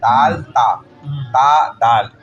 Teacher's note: ہے نا وہ مخرج دونوں کا ایک ہی ہے، تو وہ ایک ہم مخرج والے حروف جیسے کہ دال اور تا ہے، دیکھ لیں یہ زبان کی نوک سے ہی نکلتے ہیں